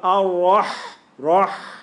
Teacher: And the ra is got to be heavy, bro. Push it down. When you say ar-rah and then push it down.